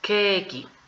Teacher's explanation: Se va a escuchar la I un poquito, pero es porque recordemos que el japonés es silábico, se tiene que formar la sílaba.